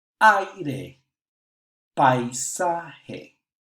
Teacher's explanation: Another type of diphthong is when one open vowel is before a closed vowel, and they still are pronounced as one syllable